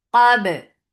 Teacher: Ba will be light. When you are making qaf heavy, you are not making ba heavy too.